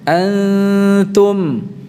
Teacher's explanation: Ini pada saat mengucapkan nun sukun yang dibaca dengan ikhfa-nya tidak menempel.